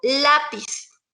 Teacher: la A es la que tiene el acento, entonces ahí tenemos que es llana porque está en la penúltima sílaba es tónica. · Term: sílaba tónica